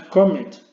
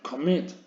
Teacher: No es comet, sino commit. El golpe de voz lo lleva a la última sílaba.